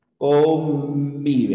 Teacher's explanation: con la palabra convive tus labios se cierran por completo convive así ya convive los labios van cerrados convive aquí la · se ha convertido en una N bilabial, básicamente en una M de mamá